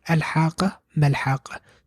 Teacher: Here we join the 2 words. That's why the hamzatul wasl is not pronounced.